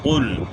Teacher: قاف کا موٹا نہیں کریں گے تو چھوٹا کاف پڑھیں گے